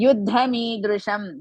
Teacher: Yuddha, Yu is Hrisva, Dha Mahaprana.